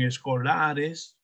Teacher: la mayor fuerza de voz en la sílaba la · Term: acento prosódico